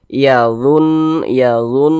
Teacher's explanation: didengungkan jadi suaranya itu kita tahan kita panjangkan sejenak yaadun yaadun di bagian dunnya itu kita tahan kita panjangkan sejenak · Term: ghunah musyaddadah